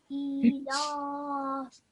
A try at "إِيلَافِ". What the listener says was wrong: Can you see how you made your alif long as well now? So ilafi. So you're saying your alif really quickly. Can you see how I'm taking my time?